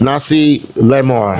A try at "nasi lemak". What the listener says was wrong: Minus the R, right? The R you put K. Nasi lemak.